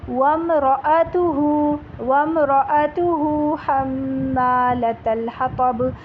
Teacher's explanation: را زبر را الگ ہے اور حمزہ زبر آ الگ پڑھیں گے. راتو ملا کے نہیں پڑھیے گا، ٹھیک ہے، ایسا لگے گا ورنہ کہ را الف زبر را تھا، یہ الف بن جائے گا اگر حمزہ کی آواز الگ سے نہیں نکالیں گے تو.